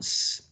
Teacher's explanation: a continuous flow of air, right? Which goes through a small gap in your oral cavity or mouth. And there's a lot of friction there caused by the tongue, the tip of the tongue, pressed against the alveolar ridge, right? · the tongue is being pressed against the alveolar ridge, as we already know, and that is causing a friction of air